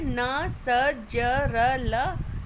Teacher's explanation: वतर्स जो है दंत मूल से, यानी दांतों के ऊपर का जो हिस्सा है उससे टकराती है। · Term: वर्तस्य